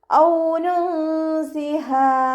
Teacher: വാവ് ഉച്ചരിക്കുമ്പോൾ ചുണ്ടുകളൊന്ന് വട്ടത്തിൽ പിടിച്ചു കൊടുക്കുക. പല്ല് ചുണ്ടിൽ തട്ടാത്ത രൂപത്തിൽ ഉച്ചരിക്കാൻ ശ്രദ്ധിക്കുക കേട്ടോ. · നൂൻ സാക്കിനയ്ക്ക് ശേഷം ഇഖ്ഫാൻ്റെ ലെറ്ററായിട്ടുള്ള സീന് വന്നു. നൂൻ സാക്കിനയെ മറച്ചു വെച്ചിട്ട് മണിച്ചോതി കൊടുക്കുക